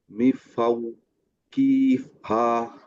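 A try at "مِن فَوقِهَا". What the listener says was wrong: মিফাও কেন? এখানে নুনটা কই যাবে? মিন, এখানে মিনের পরে ফা আছে, উচ্চারণটা কি কিরকম হবে? না, মিউ হবে কেন? না, সাদ্দা হবে না। সাদ্দা হয় কখন? যখন ইয়ার মালুন হয়। এখানে তো ইয়ার মালুনের কেউ নাই। এটা হচ্ছে, হ্যাঁ, ইকফা। লাস্টেরটা, যেটার মধ্যে সবগুলা বাদ, ইকফা।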